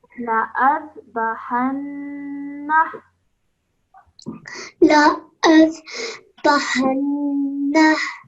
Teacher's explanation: remember to hold the nasal sound in your nose for 2 seconds, then let it go and join the ha to it